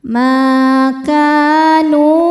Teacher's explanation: Cara bacanya huruf kaf dipanjangkan 2 harokat. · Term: mad tabi'i dhahiri